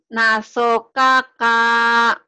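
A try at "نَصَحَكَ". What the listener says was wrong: K-nya satu, kenapa jadi K-nya dua?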